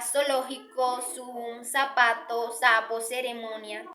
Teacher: siempre la pronunciaremos sorda, es decir, nuestras cuerdas vocales no vibrarán al pronunciarla